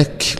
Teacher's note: الكاف، يبقى أك، وما تعملش فيها قلقل، ما تقولش أك غلط، أك همس فقط، ومعنى الهمس يعني يسمعه القريب دون البعيد